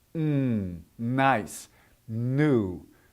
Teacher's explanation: You're going, the tongue is stopping the air, not your lips. Your tongue is stopping the air, and it's blowing it up through the back of your throat into your nose.